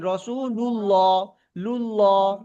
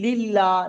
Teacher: লুল্লাহ মুখটা জি জি গোল হচ্ছে, আর লিল্লাহ মুখটা ছেড়ে যাচ্ছে, ফাঁকা হয়ে যাচ্ছে